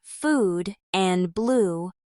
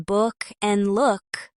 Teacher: There's the tense version like in food and blue and the more relaxed version like in book and look. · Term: OO vowel